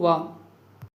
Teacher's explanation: వ యొక్క వర్ణోత్పత్తి స్థానం అనేది మనకు దంతోష్టం అవుతుంది